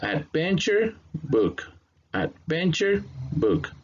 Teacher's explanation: here we have the ad, and then you have the stress sound in the second syllable. So this one is going to have the stress.